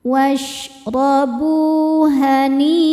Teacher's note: Bu hukum madnya adalah mad tobi'i zahiri sebab ada waw sukun yang sebelumnya berbaris dhammah. Cara bacanya huruf ba dipanjangkan 2 harokat.